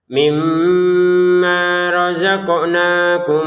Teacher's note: Masukin mim pertama kepada mim yang kedua